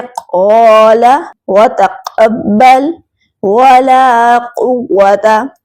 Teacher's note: काफ हर्फ को पूरा अदा करना है, क्योंकि ये हर्फ हुरूफ मुस्तअलिया में से है। और मखरज तो आपको याद ही होगा कि अदा कहाँ से होगा, और काफ हर्फ बारीक अदा होगा, जैसे क़ाला व तक़ब्बल वला क़ुव्वता।